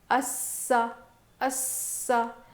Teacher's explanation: ٹھیک ہے، اس میں دو سین ہیں. تو اب دو سین رہنے کی وجہ سے ایک تو ہم اس کو سختی سے پڑھیں گے، آواز تھوڑی سخت ہوگی